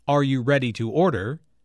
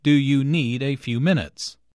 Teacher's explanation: notice the rising intonation on order and the falling intonation on minutes